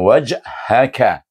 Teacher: kaf dengan hamas di depan anak tekak